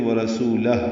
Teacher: ہا ساکن پہ ہمس ہوگا۔